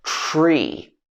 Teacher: you don't pronounce the full t sound they blend together in a blending sound